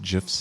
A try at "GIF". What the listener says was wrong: It's a graphic interface. Graphic. Not ja. It's not giraffic.